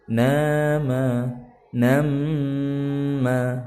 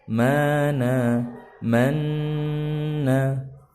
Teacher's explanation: ada nun tasydid dan mim tasydid maka dibacanya gunnah